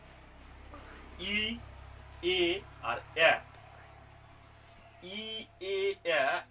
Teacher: ই, এ এবং এ, এই তিনটে স্বরবর্ণ উচ্চারণ করার সময় জিহ্বা সামনের দিকে প্রসারিত হয়। এই জন্য এই তিনটা স্বরবর্ণকে বলা হয় সম্মুখ স্বরবর্ণ।